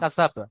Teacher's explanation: কাসাব আসলে কাসা বা আছে কিন্তু শেষেটা সাকিন করে দেবেন, কাসাব। কাসাব বানানোর সময় বলবেন মা যে বা জবর বা, কিন্তু যখন মিলিয়ে পড়বেন হুম তখন বা সাকিন করবেন, কাসাব।